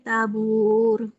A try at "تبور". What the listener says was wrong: Tabur. Buat tebal. Tabur.